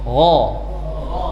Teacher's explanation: Suaranya dipaksa menjadi O tanpa bibir monyong